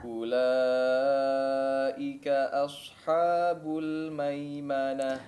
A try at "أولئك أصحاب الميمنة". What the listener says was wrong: طيب, di sini juga asha ya. Asha. Fathahnya diperjelas ya. Itmamul harakatnya diperhatikan, jangan os ya. Huruf shad yang tebal seringkali mempengaruhi huruf sebelumnya ataupun setelahnya. Ulaika ashabul maimanah.